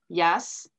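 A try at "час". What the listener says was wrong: Non, non, non. Ce n'est pas un Y. Chasse.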